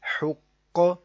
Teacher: قوف میں کلکلہ مشدد، جماؤ بھی کرنا آپ نے، اس کو آپ نے موٹا بھی پڑھنا ہے